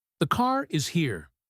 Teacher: In standard British English, if a word ends with the letter R, like car and the next word begins with a vowel, the R comes back to life to link them. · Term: linking R